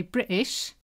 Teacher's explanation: some people drop the T in British